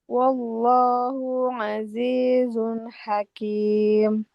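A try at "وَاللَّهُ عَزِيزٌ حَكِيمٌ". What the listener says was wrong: wallahu. Nah, di sini ha-nya dhammah, nggak ada waw. Jangan dipanjangkan. Wallahu azizun hakim.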